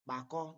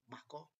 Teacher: The implosive B and P sound does not exist in English.